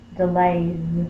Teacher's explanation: We keep the Y and add the S. And because the A sound is a voiced sound, we say the voiced Z when we say the S, plural S.